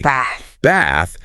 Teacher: If you use a very British vowel in one word, like pronouncing bath with a broad a